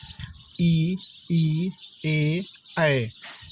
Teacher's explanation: जीभ का अगला भाग ऊपर नीचे उठता है। ऐसे स्वरों को अग्रस्वर कहा जाता है। जैसे ई, ए, ऐ, इनका उच्चारण करते हैं तो जीभ का अगला भाग, ध्यान दीजिए, जीभ का यदि भाग देखें, अगला, पिछला और मध्य 3 भाग होते हैं, तो इसमें जीभ का अगला भाग उच्चारण में भाग लेता है।